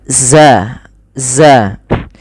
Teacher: Za ini memiliki sifat yaitu rakhawah mengalirnya suara begitu pula Zal